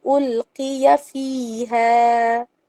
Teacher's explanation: القیا میں قاف کو موٹا رکھ کر زیر کے ساتھ پڑھنا ہے، موٹا رکھنا ہے، حلق سے ہی نکلے گا